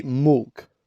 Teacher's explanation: When they have a vowel in front of the letter L, they will change it. For example, the word milk, they will change the I for another vowel. For example, a U. They will say milk.